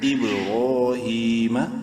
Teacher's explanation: حمزہ با زیر اب، قلقلہ کریں گے با میں ساکن ہونے کی وجہ سے، را کھڑی زبر را، ایک الف کے برابر لمبا کریں گے را کو، لیکن منہ بھر کے زبر ہے۔ ہا کھڑی زیر ہی، ایک الف برابر ہا کو بھی لمبا کریں گے کھڑی زیر کی وجہ سے، میم زبر با، ابراہیم۔